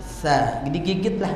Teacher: Jadi sa itu lidah menjulur. Sa, digigitlah lidah. Sa. Jadi kalau nggak begitu nanti timbul suara sin.